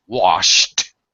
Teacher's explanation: then the D past tense ending will sound like a t